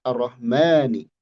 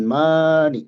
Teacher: Syamsiah namanya arro ma ee ro bertasydid arro bukan ro arro kemudian tebal ro itu arrahma huruf mim tipis dan dia dua harakat